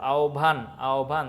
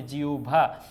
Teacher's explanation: হবের উচ্চারণটা হবে ও প্লাস ভ এর মতো